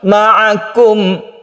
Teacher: Mim itu sifatnya tawasud atau tengah-tengah. Dia itu tidak terlalu ditekan dan tidak terlalu dilepas. Oleh karena itu tidak boleh kita membacanya terlalu ditekan.